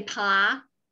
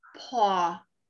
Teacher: your lips are spread for short O, ah, and your lips are rounded for the AW spelling